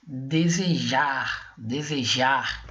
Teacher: a última sílaba da palavra é a mais forte ela possui o maior esforço respiratório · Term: oxítona